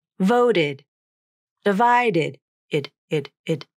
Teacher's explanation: It's important to know that this id syllable is always unstressed.